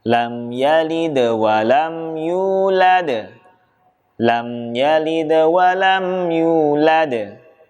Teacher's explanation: huruf Dal sukun disini juga sebaiknya cukup dipantulkan namun tidak dengan ditekan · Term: Qalqalah